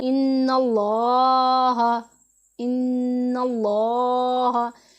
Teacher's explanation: लफ्ज़ अल्लाह के लाम से पहले ज़बर है तो इसको हमने मोटा पढ़ना है, इसमें हमने तफ़ख़ीम करनी है।